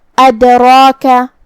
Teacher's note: ہم را کو اور مد الف کو دونوں کو بھاری آواز میں پڑھیں گے